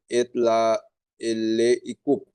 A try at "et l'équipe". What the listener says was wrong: et l'équipe, আলাদা করেন কেন মুসে, ওইটা একসাথে হবে তাই না, ওটার সাথে attached না